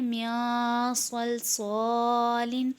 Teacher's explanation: نون ساکن کے بعد صاد ہے، صاد بھی حروف اخفا میں سے ہے، یہاں بھی غنہ کریں گے